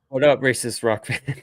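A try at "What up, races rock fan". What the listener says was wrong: You don't say that correctly. If you don't slow that down, that It sounded like you said racist rock fan.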